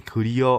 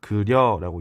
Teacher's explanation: 이와 어가 합쳐져서 이중모음인 여가 됐다고요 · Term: 이중모음화